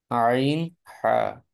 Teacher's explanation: দুই নাম্বার মাখরাজ হলকের মধ্যখান হতে